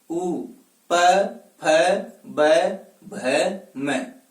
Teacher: ओष्ठ होता है। यानी पै वर्ग का उच्चारण जब हम करेंगे तो दोनों ओष्ठ एक दूसरे को स्पर्श करेंगे।